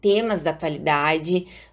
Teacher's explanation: a consoante s de tema se torna um z, ou seja, de surda ela vira sonora, pois o segmento seguinte é uma oclusiva sonora e articulatoriamente é mais fácil da gente produzir dois sons sonoros seguidos um do outro do que um surdo e um sonoro. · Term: assimilação